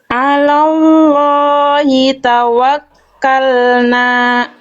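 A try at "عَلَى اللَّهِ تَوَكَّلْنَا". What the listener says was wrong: Nah, jangan ada hamzah. Tawakkalna. Jangan ada te-nya. Ya, bunyinya dilepas. Hamzah sukun. Tawakkalna. Nah, harusnya tawakkalna. Bukan jangan ada hamzahnya.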